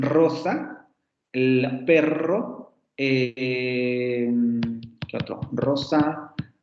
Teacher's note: que sería la primera vibrante múltiple alveolar sonora